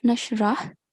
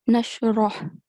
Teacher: the letter ra, it's carrying a fatha stroke, so it won't have a light sound. It will have a thick sound.